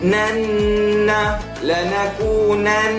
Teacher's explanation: Wajibal gunnah. Wajibal gunnah kita kena dengung 2 harakat.